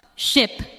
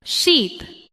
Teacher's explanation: In ship, the sound is short and relaxed. In sheep, the sound is longer and the lips may spread slightly.